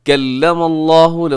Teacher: لفظ اللہ موٹا رکھیے گا، اس سے پہلے میم پہ زبر ہے